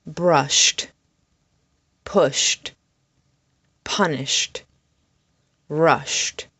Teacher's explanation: The sound at the end of these words is sht, sht, sht, sht.